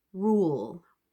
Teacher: the L at the end is quite quiet. I'm not really voicing it out very much